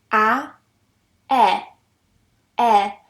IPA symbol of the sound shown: e